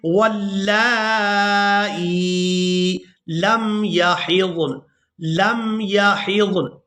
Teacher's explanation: ہم نے واو کو لام مشدد کے ساتھ ملانا ہے اور لام کو کھڑی زبر اور مد کی وجہ سے کھینچ کر ادا کرنا ہے، اور اس کے بعد حمزہ کو یا ساکن کے ساتھ ملائیں گے۔